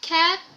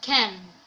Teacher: a change in a single feature oral or nasal for example the sound a which is not usually nasalized then becomes nasalized